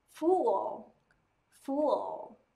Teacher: Lưỡi, đầu lưỡi chạm chân răng trong hàm trên. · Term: Âm L